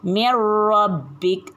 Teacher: huruf nun mati ni mesti dimasukkan ke dalam huruf ra, tapi bukan dengan dengung, tanpa dengung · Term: idgham bila gunnah